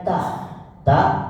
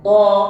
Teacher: ta tidak perlu ditekan, tapi To harus ditekan